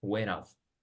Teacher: Fíjate cómo conectamos went con off,